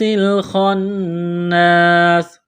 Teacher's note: نون مشدد پر غنہ کریں گے، آواز ناک میں چھپائیں گے۔ یہاں پر وقف کریں گے تو سین کو ساکن کریں گے۔